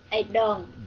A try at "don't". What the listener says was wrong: Don't. Very good. Don't. Cái nín hơi lại. Don't.